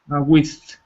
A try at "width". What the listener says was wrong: Careful, you got to put the D in there. Width. Not with, because that's like saying con, like chili con carne. But this is width.